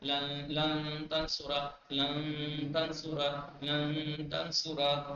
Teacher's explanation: اخفا ہوگا یعنی نون کے مخرج کو چھپا کے ناک سے پڑھا جائے گا